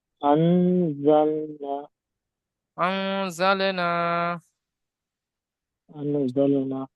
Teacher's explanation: আহ, নুন আলিফ, আলিফ যদি বলে আলিফ মাদ্দা, একে এক আলিফ পরিমাণ টান দিয়ে পড়তে হবে।